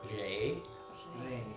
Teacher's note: So this is R-E, but the R is not quite rolled, but it's almost like you're about to roll the R